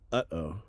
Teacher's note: made by slightly stopping the breath it is like the interruption in the middle of the English interjection uh-oh